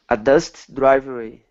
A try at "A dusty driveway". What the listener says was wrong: Okay, so Portuguese speakers have a tough time pronouncing E sounds at the end of a word unless it's an E that you're not supposed to say, like Lance. So when you're not supposed to say it, it comes out and you say words like Lancy or righty.